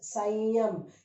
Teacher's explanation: You say, because ya has come there, you say it is sanyam. You don't say samyam, it is sanyam. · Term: anuswar